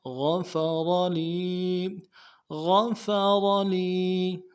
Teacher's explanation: غین کو واضح کریں گے، فا کو واضح کریں گے، غفر را کو موٹا کریں گے